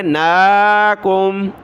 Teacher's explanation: قتالا لتبع، تا زبر تا، با عین زبر با، تبع، نون کھڑا زبر نا، کاف میم پیش کم، نون کو ایک الف کی مقدار کھینچا کیونکہ کھڑا زبر ہے